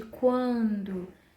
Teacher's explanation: Quando eu pego a transcrição da palavra quando, esse A, ele é um pouco nasal.